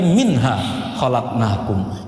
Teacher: Jika nun sakinah bertemu dengan ha, yang diucapkan di pangkal tenggorokan, maka bunyinya harus izhar, atau jernih.